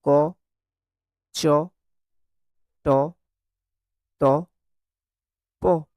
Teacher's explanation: যে সকল ব্যঞ্জন উচ্চারণ করার সময় স্বরতন্ত্রীর কম্পন মৃদু বা গাম্ভীর্যযুক্ত নয় ও শ্বাসবায়ু কম লাগে, তাদেরকে আমরা অঘোষ অল্পপ্রাণ ব্যঞ্জন বলে থাকি। তাহলে দেখো প্রতিটি বর্গের প্রথম ব্যঞ্জন যেটা, প্রতিটি বর্গের, সেগুলো হচ্ছে অঘোষ অল্পপ্রাণ।